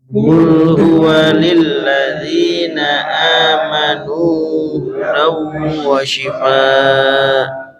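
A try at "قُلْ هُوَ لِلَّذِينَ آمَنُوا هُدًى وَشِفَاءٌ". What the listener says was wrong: Ada hamzahnya tuh belakangnya ya. Belakangnya ada. Ada hamzahnya. Jangan shifa'u tapi syifa gitu ya.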